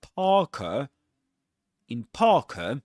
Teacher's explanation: the letter R is not pronounced because right after it comes a consonant sound.